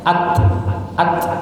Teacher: jangan sampai ke huruf s jangan ATS tapi percikan saja